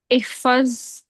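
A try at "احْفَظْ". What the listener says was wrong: एहफज ठीक था, पहले एहफज साकिन हो जाएगा ना लास्ट वाला।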